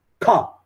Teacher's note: इसमें प्राण ज्यादा बाहर आया स्वास ज्यादा हवा बहर ज्यादा आई तो यह महाप्राण है